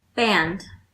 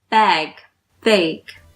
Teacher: The A sound is pronounced longer before the nasal sound N than the velar sound G.